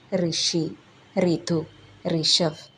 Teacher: ഹിന്ദിയിൽ ഋ എന്ന അക്ഷരം നമ്മൾ ഉച്ചരിക്കുന്നത് റി എന്നാണ് ഒരിക്കലും ഋ എന്ന് ഹിന്ദിയിൽ നമ്മൾ പറയാറില്ല ഉദാഹരണത്തിന് ഋഷി റിതു ഋഷഫ് ഈ അക്ഷരം ഹിന്ദിയിൽ എപ്പോ ഉച്ചരിച്ചാലും റി എന്നേ